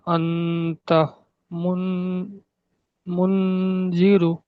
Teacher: নুন সাকিনের পরে হুরুফে ইকফার একটি অক্ষর এসছে, জাল। তাই নুন সাকিনকে নাকে তুলে এক আলিফ পরিমাণ গুণনা করে পড়তে হবে। জালের নিচে জের এসছে, জেরটি হলো হারাকাত, হারাকাতকে তাড়াতাড়ি পড়তে হয়, টেনে পড়া নিষেধ।